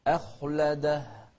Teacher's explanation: شوف الهمزة بعدها حرف مفخم، فنفخم الخاء ونرقق الهمزة.